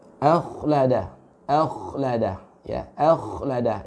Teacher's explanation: Akhlada ya, akhlada irtifa ya, apa itu aqsal lisan ya, jadi mengangkat yang di belakang nih, lidah kita yang di belakang itu terangkat ya, diangkat karena huruf kha termasuk huruf isti'la ya.